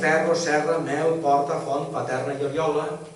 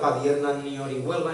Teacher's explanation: el mossàrab o la llengua romànica de la preconquista valenciana no diftongava la E i la O breus